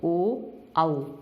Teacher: इन वर्णों का उच्चारण कंठ और ओष्ठ, इसलिए इसको कंठोष्ठ कहते हैं, की सहायता से किया जाता है, जैसे ओ, औ। कंठ का प्रयोग भी हो रहा है और होठों का प्रयोग भी हो रहा है